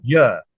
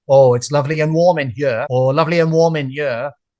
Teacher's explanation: for some people from Wales, they might drop the H.